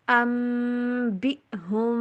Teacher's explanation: قال یا آدم، دمو کو لمبا نہیں کرنا، یا آدم انبئہم ام کے اوپر بھی اور ہم کے اوپر دونوں جگہوں پہ غنہ کیجئے. بی حمزہ کے اوپر کٹ والی ساؤنڈ جو ایئر ہوتی ہے نا، جو ہوا نکل رہی ہوتی ہے ہمارے لنگز سے، تو حلق کے اندر آ کے بالکل بلاک ہو جائے گی.